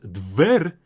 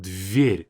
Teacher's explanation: And this word дверь, I would say, is very hard to pronounce because we have this concept of soft and hard consonants in Russian. This letter D is hard, but this V and R, they'll be soft.